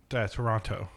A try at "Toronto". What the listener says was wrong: It's actually Toronto. No, there's no T in the pronunciation.